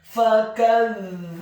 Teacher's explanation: huruf ba-nya dibaca tipis dhammah 2 harokat karena setelahnya ada huruf wawu sukun, dan huruf ha-nya dibaca tafkhim tebal dhammah 1 harokat.